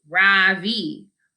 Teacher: In American, people call me Ravi with the stress on the first syllable.